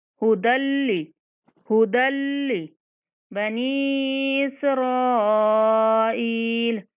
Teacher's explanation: بلا غنہ دال کو لام کے ساتھ ملانا ہے